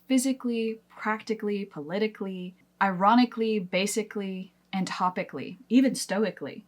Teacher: If your adjective ends in a C and the ending is going to be added for the adverb as A-L-L-Y, you're probably going to skip that A. You're just going to drop it completely and just go cl, clee, clee at the end.